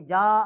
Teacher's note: اور آگے جو الف ہے اور اس کے اوپر مد ہے، یہ بڑی والی مد ہے، ایک الف جتنا ہم اس کو کھینچیں گے،